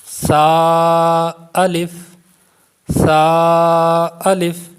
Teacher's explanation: سا میں یہ آپ نے کوشش کرنی ہے کہ جب سا کو پڑھیں تو سا میں سیٹی کی آواز پیدا نہ ہو